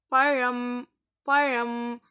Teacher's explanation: இந்த பழம் என்று சொல்வதற்கான லா, அந்த லா வந்து வரும். இந்த கடவா பள்ளியில் போய் இந்த லாவை வச்சு சொல்லுவோம் நம்ம. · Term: லா சவுண்டு